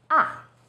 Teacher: starts High then Falls sharply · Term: fourth tone